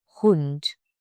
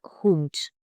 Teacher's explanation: But suppose your word is ending with D, for example, Hund. The pronunciation of D sounds like T